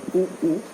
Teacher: ओष्ठ उच्चारण के समय दोनों ओष्ठ के जो प्रयास होते हैं वो प्रयास स्पष्ट दिखाई देता है ओष्ठ वर्ण में। जब हम उ और उ कहते हैं, उ उ, तो हमारे ओठ गोल हो जाते